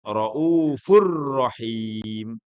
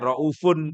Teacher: Raufur rahim. Mestinya raufun tapi disambung kepada ro menjadi raufur rahim. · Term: idgham bila ghunah